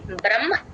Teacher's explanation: మా వత్తు ఎప్పుడు వచ్చినా సరే మా ఫస్ట్ చెప్పి తర్వాత హ చెప్తాం